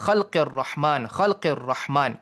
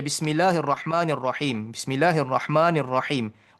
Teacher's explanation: Bismillahirrahmanirrahim bunyi getar itu dihilangkan. Apabila ra syaddah dia paling kurang getaran itu. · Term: ra yang syaddah